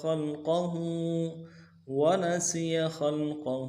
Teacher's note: ونسی خلقہ، خلقہ، خا کو لام کے ساتھ ملانا ہے، خا موٹا کریں گے، قاف کو موٹا کریں گے، ہا کے اوپر الٹا پیش ہے، ایک الف دال میں کھینچیں گے.